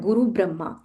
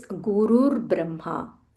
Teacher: It is not Guru Brahma, it is Gurur Brahma. Gurur, there is a half R here.